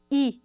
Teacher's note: os cantinhos da nossa língua encostam um pouco nos dentes especialmente os dentes superiores e até mesmo no palato duro no céu da boca · a vogal mais alta em relação à posição da língua